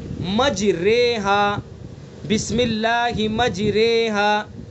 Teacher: مجری پڑھا تو زیر پڑھا جائے گا، مجرا پڑھا تو زبر پڑھا جائے گا. تو ہمیں نہ مجری پڑھنا ہے نہ مجرا پڑھنا ہے، بلکہ دونوں کے درمیان کی حرکت پڑھنی ہے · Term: امالہ